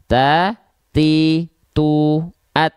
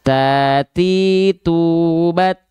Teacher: huruf ta itu dia sifatnya bukan mengalir nafas tapi hanya berupa percikan nafas saja